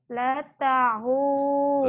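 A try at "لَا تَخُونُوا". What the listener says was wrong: la-nya panjang. La takhu kha. La takhunu.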